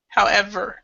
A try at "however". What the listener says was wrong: So what you need to do is try to pronounce the V a little bit stronger. However. However, so because what it sounded like when you read it was however. So however.